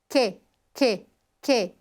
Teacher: Ponto de articulação palatal na parte posterior ou no centro do palato.